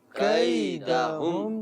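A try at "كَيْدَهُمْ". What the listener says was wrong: اب یہاں پر بھی دیکھیے وہی حرف لین ہے اور مجہول کر دیا جاتا ہے کیدہم، تو کیدہم نہیں کیدہم پڑھ لیجئے. کیدہم. کئی. کئی. کیدہم. اچھا آپ محسوس کر رہے ہیں میرے ہونٹ گول ہو رہے ہوں گے، تو بات پھر وہی کہ پیش میں ہونٹ گول کرنا ضروری ہے.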